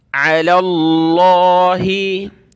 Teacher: देखिए लफ्ज़ अल्लाह से पहले ज़बर है लाम पर तो लफ्ज़ अल्लाह को मोटा करेंगे